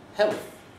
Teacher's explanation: Well, the point is that they put their tongue between their teeth for the L. So we have what we term a dental L.